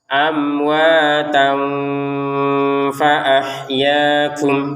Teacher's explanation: Jadi kita mempertemukan tanwin ini kepada huruf fa sehingga terbacanya dengan samar. Sama seperti ini kuntum kunnya itu dibaca dengan samar.